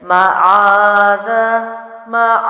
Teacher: جزم لگے گا، تو ذال کو قلقلہ نہیں کریں گے کیونکہ قلقلہ میں سے نہیں ہے